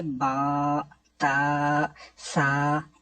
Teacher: تو قرآن پاک پڑھا جاتا ہے عربی لہجے کے اندر، عربی لہجے کے مطابق قرآن پاک کو اگر پڑھیں گے تو وہ بے، تے نہیں بلکہ با، تا، سا ایسے ہوگا